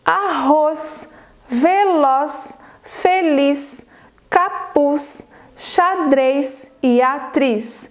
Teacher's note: todas essas palavras elas são oxítonas ou seja toda a sílaba tônica é a última